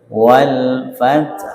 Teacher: itu dibaca dengan ha di sukun tapi dengan suara yang lirih gitu nggih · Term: al-ikhfa bil maknal jadid